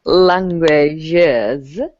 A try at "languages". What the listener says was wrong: Languages. So you have to add the extra syllable there. Languages.